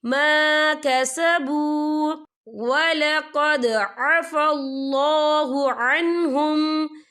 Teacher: یہاں پہ دال ساکن ہے تو یہاں پر کلکلہ ہوگا